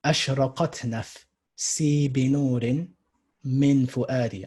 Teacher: So you have long, short, long, long. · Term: fa'ilatun